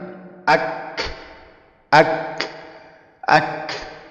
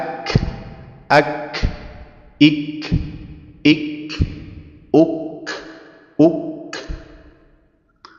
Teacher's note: bersentuhan antara pangkal lidah dengan langit-langit yang keras dan yang lunak sekaligus bersamaan dan tempatnya itu sedikit di bawah tempat keluarnya huruf qf bisa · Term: huruf Kaf, huruf kaf